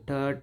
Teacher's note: ಮೇಲ್ಭಾಗದಲ್ಲಿ ಉಚ್ಚರಿಸಲ್ಪಡುವುದರಿಂದ ಇವುಗಳಿಗೆ ನಾವು ಮೂರ್ಧನ್ಯ ಅಕ್ಷರಗಳು ಅಂತ ಹೇಳ್ತಿವಿ ಟ ಟ ಅಂದ್ರೆ ನಮ್ಮ ನಾಲಿಗೆ ಹಿಂಭಾಗದಲ್ಲಿ ಮಡಚಿಕೊಂಡು ಉಚ್ಚಾರ ಆಗುವಂತ ಇವು ಅಕ್ಷರಗಳು